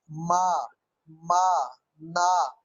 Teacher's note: ये वो साउंड है जो नाक की वाइब्रेशन से निकलते हैं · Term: नेजल साउंड